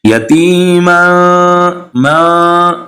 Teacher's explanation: اخفا کہتے ہیں ناک میں آواز کو چھپانا۔ ناک سے آواز نکلے گی لیکن ہم دبا کے ناک سے آواز نہیں نکالیں گے، بالکل نرمی کے ساتھ نکالیں گے۔